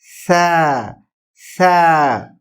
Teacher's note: सा बारीक लेटर है, मोटा नहीं है, और इसको शिद्दत से भी नहीं पढ़ेंगे